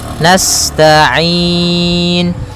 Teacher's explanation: sifat sinnya sempurnakan dengan mengalirkan nafasnya · pada lafal ain ada bacaan mad arid disukun, yaitu boleh memanjangkannya 2 harokat, 4 harokat ataupun 6 harokat